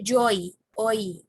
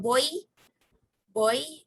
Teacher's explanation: The o sound is not as long in oi as it is when it's alone. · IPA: /ɔɪ/